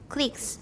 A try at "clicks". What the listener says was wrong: Not clee, click.